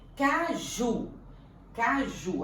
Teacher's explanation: Caju. A sílaba tônica é o ju.